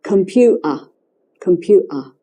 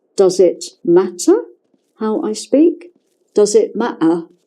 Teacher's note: okay another example another aspect of cockney is the glottal stop words like computer with a T in it the T is not pronounced